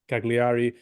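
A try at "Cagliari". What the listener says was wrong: don't say the g okay the G is not there it's silent G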